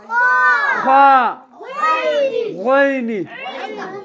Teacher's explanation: وكم حرفان يخرج من أدنى الحلق